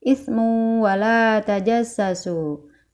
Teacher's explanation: Di antaranya adalah idgham bigunah pada kalimat ismu wala tajassasu, yaitu yang ditandai merah ya teman-teman. Domatain pada kata ismu bertemu dengan waw, maka dibaca masuk ke waw dengan ditahan 3 harokat.